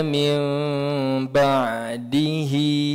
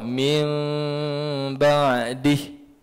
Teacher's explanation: kalau kita sambung, hi itu hidup, maka kita kena panjangkan dengan kadar 2 harkat sebab dia adalah mad silah. Mad silah qasirah.